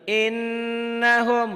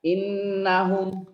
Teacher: Dibaca dengung ke hidung itulah guna.